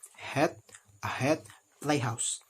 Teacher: The place of articulation of this consonant is glottal. This means that the narrowing that produces the friction noise is between the vocal port, as described in chapter 4.